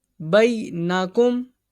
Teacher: یا ساکن سے پہلے زبر، اس کو نہیں کھینچیں گے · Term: یا لینا